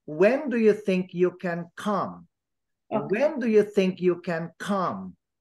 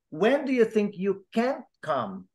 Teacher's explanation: negative when it is negative everybody you stress the can but if it is positive you do not stress can you stress the main verb